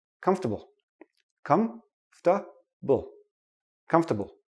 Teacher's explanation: We don't pronounce the or.